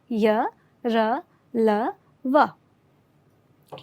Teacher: अंतस्थ व्यंजनों का जो उच्चारण है वह स्वर और व्यंजन के बीच का होता है, यानी इसमें वागिंद्रियाँ जो हैं वो थोड़ी खुली रहती हैं